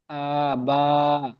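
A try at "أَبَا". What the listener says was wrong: হামজাটি টান হয়ে যাচ্ছে, কিন্তু বাটি আলিম মাদ্দা টান হবে। এখানে টান দেন, হামজা টান হবে না।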